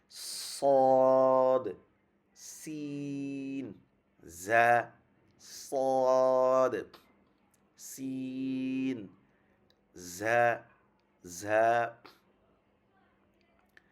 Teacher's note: জিহ্বার আগা সামনের নিচের দুই দাঁতের পেট ও আগার সাথে লাগিয়ে এটা দুই দাঁতের যে আগা এটার মাঝখান এবং পুরোটা মানে পুরোপুরি না গোড়া মাঝখান থেকে উপর পর্যন্ত লাগবে লেগে তারপর উচ্চারণটা হবে صاد صاد سين ز صاد صاد প্রথমটা তুমি উচ্চারণ হবে এরকম হয়ে যাবে, সদ হয়ে যাবে।